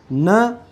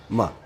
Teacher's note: ऐसे वर्ण है जिनका उच्चारण करते समय जो ध्वनि है नाक से निकलती है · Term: नासिक्य